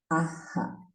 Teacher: Anuswara es una nasaliza a la vocal anterior. Y Visarga libera un poco de aire generando eco en la vocal.